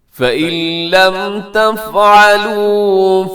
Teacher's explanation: فَإِن اصل میں ہے نون ساکن، اور نون ساکن کے بعد لام حروف یرملون میں سے، تو ہم نے کیا کر دیا جی؟ یہاں پہ ادغام کر دیا بغیر غننے کے